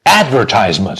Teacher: So the stress on the first syllable, advertisement.